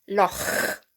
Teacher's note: it's a very guttural sound, a bit like you're clearing your throat